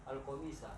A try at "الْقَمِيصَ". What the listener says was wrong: Kalau sa itu sa, ini so. Al-qamiso. Ya, kalau sa, ya sa itu beda dengan so ya. Nah, ghasalat Aminatu al-qamiso. Ya, ghasalat Aminatu al-qamiso. Bil fathah. Al-qamiso. Al-qamiso. Laisa bil alif.